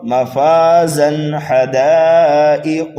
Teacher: تنوین کے بعد ہا حروف حلقی میں سے آنے کی وجہ سے یہاں پر اظہار حلقی ہو رہا ہے